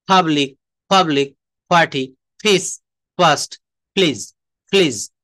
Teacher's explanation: এই যে শব্দের শুরুতে পি থাকলে পি এর উচ্চারণ প না হয়ে ফ এর মতো হবে।